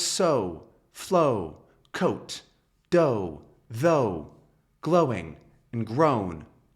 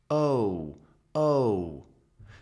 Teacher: Can't be too long. We say this sound by really keeping it a small and quick glide. The tongue is pretty far back and the lips come together. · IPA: /oʊ/